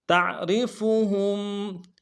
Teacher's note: تا کو عین کے ساتھ ملانا ہے، عین کو گہرائی سے ادا کریں گے، را کو باریک ادا کریں گے ، فا کو نرم سے ادا کریں گے، ہا کو میم · ہا کو میم ساکن کے ساتھ ملانا ہے، میم ساکن میں غنہ کریں گے